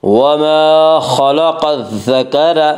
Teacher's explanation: الذکر کی را کو پر پڑھیں گے